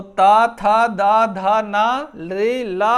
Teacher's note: दंत्य। यानी इनके उच्चारण में हमारी जिह्वा कम या ज्यादा दांत को जो है स्पर्श करती है